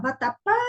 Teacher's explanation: qual foi a sílaba que deu mais sonoridade? Foi o pá, não foi? Então, esta é a sílaba mais forte da palavra. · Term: sílaba tônica